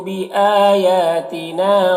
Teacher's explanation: بآیاتنا حمزہ اور یا دونوں میں کھڑا زبر ہے جو الف مدہ کی طرح ہوتا ہے